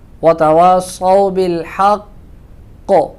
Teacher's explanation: یہاں وتواصوا صاد کو موٹا ادا کریں گے، اور اگر ہم یہاں وقف کرتے ہیں بالحق پہ تو قاف مشدد ہے تو یہاں قلقلہ ہوگا اور قلقلے کا اعلیٰ درجہ ہوگا. مثلا وتواصوا بالحق، ایسے پڑھیں گے کیونکہ قاف مشدد ہے اور یہاں پہ سب سے زیادہ قلقلہ ہوگا.